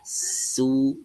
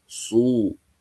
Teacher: Di huruf sin ditarik sedikit, ya. Su. Huruf shad langsung dimonyongkan.